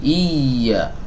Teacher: nanti pas masuk ke huruf ya itu agak dihentak sedikit, agak dinaikkan sedikit, baru masuk ke huruf berikutnya turunkan lagi suaranya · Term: nabr